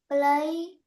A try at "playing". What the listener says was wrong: Let's say playing. Don't forget the ing. So we will add it to our pronunciation, which is playing.